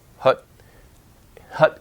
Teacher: in British maybe the lips are more rounded like the Korean uh hut hut in American English herb lips or bit less rounded